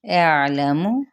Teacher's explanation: اعلم، حمزہ کی زبر کو عین کے ساتھ ملائیں گے، عین کو بھی وسط حلق سے ادا کرنا ہے جزم کے ساتھ، اور میم کی حرکت کو لمبا نہیں کریں گے۔